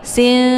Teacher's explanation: nun ini disamarkan tidak jelas ke n juga tidak jelas ke ung ya. Tapi sin jadi ee disamarkan nunnya siap-siap mau baca huruf sya. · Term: yakhfa